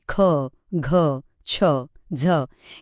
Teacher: काही व्यंजनं उच्चारताना हवा खूप जोरात बाहेर फेकली जाते, जसं की ख, घ, छ, झ यांना म्हणतात महाप्राण.